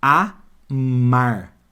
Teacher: o m ele não ficou com a vogal anterior ele faz parte da outra sílaba e ele tem som próprio